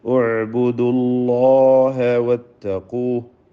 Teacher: അല്ലാഹ് എന്ന ഇസ്മുൽ ജലാലയിൽ ലാമിന് തഫ്ഖീമാണ്. തടിപ്പിച്ച് പറയാം.